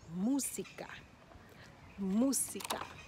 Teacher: the emphasis is on the u it's on the first syllable